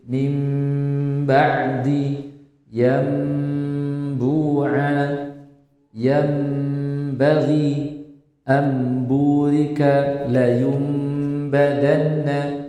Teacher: itu dirubah semuanya nun sukun dan tanwinnya ke mim yang tersembunyi dengan harus menjaga tempo ghunah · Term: iqlab, iklab